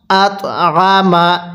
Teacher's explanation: এই ত এর মধ্যে আমরা ধাক্কা দিয়ে পড়বো কারণ তটি হলো কলকলার হরফ